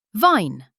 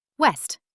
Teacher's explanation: Rounded lips, no teeth contact